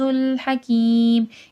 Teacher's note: حکیم میں بھی یا ساکن سے پہلے زیر ہے، کھینچ کے پڑھا جائے گا